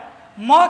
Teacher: म जो है वह प वर्ग के अंतर्गत आता है और प वर्ग का उच्चारण स्थान ओष्ठ होता है